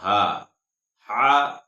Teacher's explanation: ये हलक से अदा होता है यानी दरमियानी हलक से